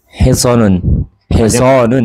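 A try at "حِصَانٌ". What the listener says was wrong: Iya, panjang.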